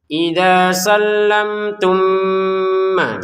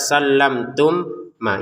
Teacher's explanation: mim sukun bertemu mim, masukin mim pertama kepada mim yang kedua dan dengan dengungan. Idza sallamtum ma, jadi langsung saja didengungkan ya, jangan dibaca sallamtum ma, itu kan diputus ataupun dibaca dengan jelas.